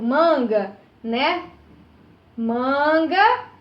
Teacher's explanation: Manga, a penúltima sílaba, no caso, né, é que é a mais forte. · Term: paroxítonas